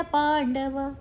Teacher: ಪ್ರಕಾಶಂಚ ಪ್ರವೃತ್ತಿಂಚ ಮೋಹಮೇವ ಚ, ಮೋ ದೀರ್ಘ ಮೇ ದೀರ್ಘ, ಮೋಹಮೇವ ಚ ಪಾಂಡವ ಪಾ ದೀರ್ಘ ನಂತರ ಅನುಸ್ವಾರದ ಉಚ್ಚಾರಣೆ ಣ